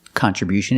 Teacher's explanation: at the end with T-I-O-N, you hear the sound sh